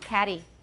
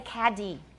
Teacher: younger British speakers the tea and caddy is not catchy it it's a tap right short D that cannot be lengthened caddy and by the way many Brits have trouble with that